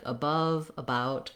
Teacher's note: a that aren't stressed on the letter a like above about just make sure that you're using the uh sound and not trying to do any sort of a sound if you're not stressing on it